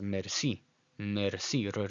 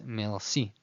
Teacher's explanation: some people call it a French R, which means it's at the back of your throat